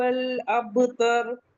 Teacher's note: ابتر با پہ قلقلہ ہوگا اور را کو ہیوی پڑھیں گے